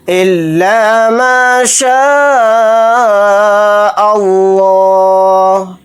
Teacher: اس لفظ اللہ کے لام کو موٹا یعنی پر پڑھیں گے کیونکہ لفظ اللہ کے لام سے پہلے زبر آ رہا ہے